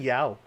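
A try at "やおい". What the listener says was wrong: There's an I at the end. I don't think the Japanese do silent letters.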